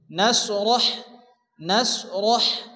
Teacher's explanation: আলাম আলাম নাশরাহ, এখানে বড় হা আসছে, র এবং হা একসঙ্গে সংযুক্ত করে পড়তে হবে এবং হাকে মুখ দিয়ে বাতাস বের করে উচ্চারণ করে পড়তে হবে